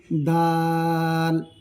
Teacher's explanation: গলার মাঝ থেকে আদায় করবে খা গলার সম্মুখ থেকে আদায় করবে দাল জিহবার আগা সামনের দাঁতের গোড়া